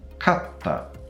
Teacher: an example of a lexical distinction being created with gemination, with the insertion of small tsu.